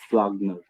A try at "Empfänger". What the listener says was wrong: No, M. No, no. How it's EMP, like M finger. M finger.